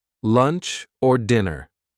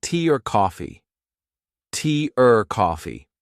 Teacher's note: the word or gets reduced, gets shortened, gets linked to a word before or a word after